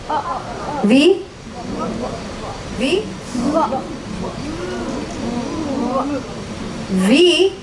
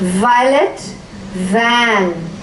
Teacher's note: Your teeth should touch the lower lip. There's a vibration.